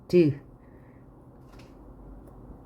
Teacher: 자, 그러면 입술 소리이면서 파열음인 거 브, 그 다음에 잇몸 소리이면서 파열음인 거